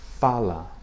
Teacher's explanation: If you listen to fala, the 2 A sounds are not the same. The first is open, fa, the second is closed, la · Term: Open A and closed A